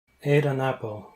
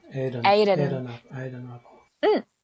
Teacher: So the T sound becomes like a rather D and L sounds.